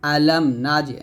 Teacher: আসে নাই মিম আসে নাই নুন আসছে অন্য হরফ আসছে তো মিম সাকিনের পর অন্য হরফ আসে সেটাকে মিম সাকিনের ইজহার বলে এখানে গুণ করবে না